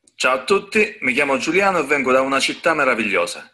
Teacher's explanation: Vengo da una città meravigliosa, with a O, very open O